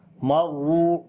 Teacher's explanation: را کو تھوڑا سا سٹرونگ پڑھیں گے اور ہلکا سا رکیں گے، کیونکہ جب بھی کسی بھی حرف کے اوپر شد آتی ہے وہاں پر ہلکا سا رک کر پڑھتے ہیں اور آواز کو سٹرونگ کرتے ہیں سٹریس آواز کے ساتھ۔